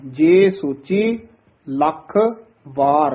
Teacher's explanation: ਲੱਖ ਥੋੜਾ ਜਿਹਾ ਦੱਬ ਕੇ ਬੋਲਣਾ ਕੱਸ ਕੇ ਉਚਾਰਨ ਕਰਨਾ ਹੈ ਵਾਰ ਵੱਖਰਾ ਬੋਲਣਾ ਹੈ ਜੇ ਸੋਚੀ ਲੱਖ ਵਾਰ ਲਖ ਵਾਰ ਨਹੀਂ